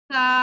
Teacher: दोनों दांतों के दरमियान मैंने जुबान की नोक को रखा